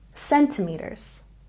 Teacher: We stress the first syllable in centimeters